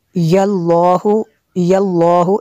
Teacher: لفظ اللہ کو پر کریں گے کیونکہ اس سے پہلے لفظ پر زبر ہے